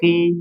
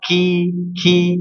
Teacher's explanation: kalau huruf qof ini tebalnya tidak dikategorikan idbaq ya. Jadi hanya tebal saja ya. Jadi enggak dibaca qi ya.